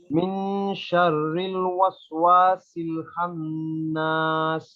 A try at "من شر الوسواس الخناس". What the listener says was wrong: শাররিল একটু ঠোঁট গোল হয়ে গেছে, আরেকটু পাশ রেখে শাররিল শাররিল শাররিল, মুখ পাশ। আরেকটা হচ্ছে এখানে খ, খান্নাস না, খ আমরা পড়েছিলাম খ খে খো, তাহলে খন্নাস পড়েন।